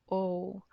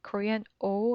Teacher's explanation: remember english o is quite similar but different than korean oh korean oh it's simple short and clear the sound does not change